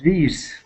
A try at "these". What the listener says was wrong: Nice job.